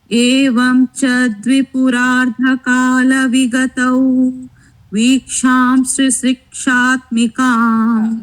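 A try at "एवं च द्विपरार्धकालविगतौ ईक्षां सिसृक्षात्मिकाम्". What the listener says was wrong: Now once we make it as vigatau, next it is not viksham, it is iksham.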